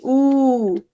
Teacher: উ ধ্বনি, ঠোঁটের ফাঁকাটা ছোট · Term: সংবৃত